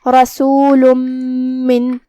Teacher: میم حروف الادغام میں سے ہے، اور جو کہ ادغام کا معنی ہے حرف کو حرف میں داخل کرنا، تو ہم یہ تنوین کو میم میں داخل کر کے غنہ کے ساتھ اور تشدید کے ساتھ یہ حکم کو ادا کریں گے